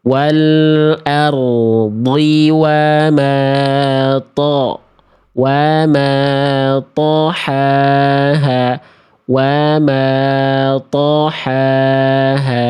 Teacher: tebalnya bukan karena monyong tapi terangkat bagian pangkal lidah